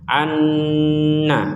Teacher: Yang perlu diperhatikan di sini ada mim bertasydid, kita dengungkan sebagaimana yang tadi anna, nun bertasydid, maka annya itu dengung. An dengung dulu baru ke na.